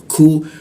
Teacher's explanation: huruf ku itu di siku tenggorokan, lidahnya kita turunkan sehingga ada hembusan udara ketika membaca ku.